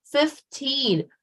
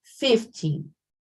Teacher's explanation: I am putting more energy on teen, and I am not forgetting to close the N